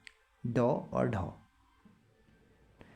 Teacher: उच्चारण में जीव पहले ऊपर उठकर मूर्धा को स्पर्श करती है फिर झटके से नीचे आती है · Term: द्विगुण उचि ताड़न जात